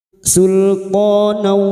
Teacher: masuk dengan mendengung masuk pada huruf wau dan mendengung selama tiga harakat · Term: idgham bi ghunna